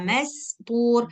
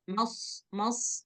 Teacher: Kalau sin tipis, sod dia tebal. Nah, jadi cukup berdesis, nggak perlu dibuat tebal.